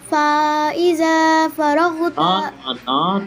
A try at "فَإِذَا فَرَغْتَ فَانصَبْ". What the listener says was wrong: فارغ ہوتا، تا کو آپ نے تھوڑا سا کھینچ دیا ہے، تا کو بالکل نہیں کھینچنا. فارغ ہوتا فن یعنی فارغ کے بعد جب تا کو پڑھیں گے تو بس تا کی زبر کی آواز بتانی ہے کہ تا زبر کی آواز اوپر ہے، اس کو لانگ نہیں ہونے دینا.